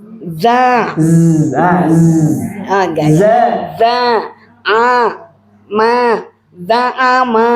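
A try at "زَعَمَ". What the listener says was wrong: Kurang di sis za-nya. Za'ama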